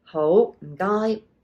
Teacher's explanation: it's the mid-rising ho, and then your low tone guy